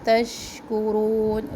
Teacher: شین کی آواز میں پھیلنے کی صفت ہے